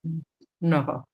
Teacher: ना नहीं बोलना, नह विसर्ग की आवाज ह की थोड़ी थोड़ी आनी चाहिए